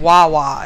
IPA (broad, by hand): wawa